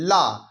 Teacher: जबान के साइड से हवा बाहर की ओर निकलती है तो यह हो गई हमारी पार्श्विक व्यंजन की परिभाषा हमारा है